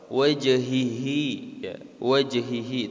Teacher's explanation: qalqala jim mati di situ, maka harus dipantulkan karena termasuk dalam hukum qalqala. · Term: qalqalah sugro